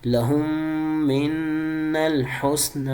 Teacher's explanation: میں نے نون پہ بھی گنہ کیا، میم پہ بھی گنہ کیا، یہاں والے میم پہ بھی گنہ کیا.